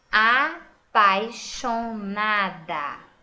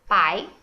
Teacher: quando eu falo pai, o A sai forte, pai, mas o I sai fraquinho, não é? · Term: ditongo